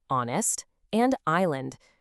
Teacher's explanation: There is absolutely zero H sound in honest, and no S sound in island. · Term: silent letters